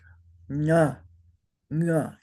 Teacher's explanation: And the nasal, if you say that N sound in the back of your throat, it sounds like nga, nga. You say it by closing up your throat.